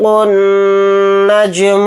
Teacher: النجم الثاقب، نون کے اوپر تشدید ہے تو نون کے اندر غنہ کر کے پڑھیں گے، اور جیم کے اوپر جزم ہے تو جیم کے اندر قلقلہ کریں گے، قاف کو یہاں پر موٹا یعنی پر پڑھیں گے، با کو ساکن بنا کر پڑھیں گے حالت وقف میں، اور با ساکن ہوگا تو با کے اندر قلقلہ بھی کریں گے